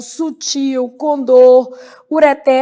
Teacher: Apresentam a última sílaba como tônica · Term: oxítonas